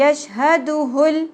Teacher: ह की पेश लाम साकिन के साथ मिल जाएगी